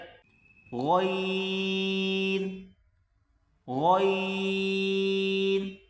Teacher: گلے سے زور لگا کر جیسے کہ انسان کھانستا ہے، بلغم نکالتا ہے، اسی طرح اس لفظ کو ادا کریں، غین، غین۔